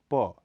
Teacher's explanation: यह अल्प प्राण अघोष ध्वनि है इसका उच्चारण स्थल होठ